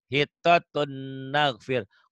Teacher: Ditulisnya ada hittatun, ada n-nya, dibacanya n-nya hilang. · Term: idgham bigunnah